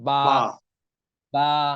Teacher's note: এরপর হলো বা, ঠোঁটের ভিজাই, ভিজাই। ঠোঁটের যে ভিজা অংশ এটা থেকে বা